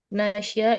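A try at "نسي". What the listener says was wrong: Ini sinnya di kasrah ya. Nasiya. sukun. Nasiya.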